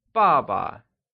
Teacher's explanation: Father translates as 爸爸, and is pronounced using the falling tone.